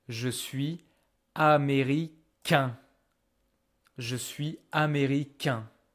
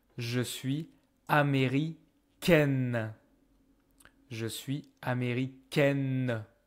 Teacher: every time the male version, very often, they have this final consonant that you don't hear actually. But when they turn into female, suddenly you hear the consonant because you have added the letter E, and so now you can pronounce the consonant.